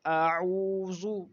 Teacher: واو مدہ جو ہے اس کو ہم ایک الف کے برابر کھینچ کے پڑھتے ہیں